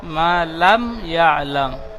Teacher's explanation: মা আলিফ মাদ্দা একালিফ টান দিয়ে পড়তে হবে, মা লাম ইয়া আলাম।